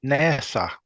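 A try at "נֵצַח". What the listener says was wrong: Yeah, but with less friction in your mouth. No friction, really.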